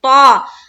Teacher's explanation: تا نہیں ہے یہ طا ہے، طا منہ بھر کر بولیں گے